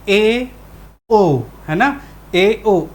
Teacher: मुख जो है आधा बंद होगा, पूरा बंद नहीं है, यहाँ तक बंद नहीं है, यहाँ से हल्का आधे बंद की स्थिति में होगा, उसे क्या कहेंगे, संवृत स्वर में अर्ध संवृत स्वर कहेंगे, ठीक है, सॉरी, अर्ध संवृत स्वर।